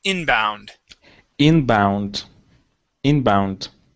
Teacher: is inbound okay you had said inbound putting the stress here the stress needs to go at the very beginning